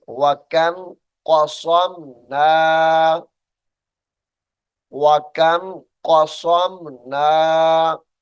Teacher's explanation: قاف بھی موٹا ہے، صاد بھی موٹی ہے، دونوں کو موٹا کر کے پڑھیں گے